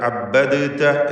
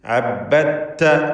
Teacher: അബ്ബദത എന്ന് പറയേണ്ടതിന് പകരം ഇവിടെ ഇദ്ഗാം ചെയ്യുകയാണ്, ഇദ്ഗാം കാമിൽ. അബ്ബത്ത, തായിന് ഷദ്ദ് കൊടുത്ത് താ മാത്രം ഉച്ചരിക്കുക. ദാലിൻ്റെ ശബ്ദം അല്പം പോലും ഉണ്ടാവുകയില്ല.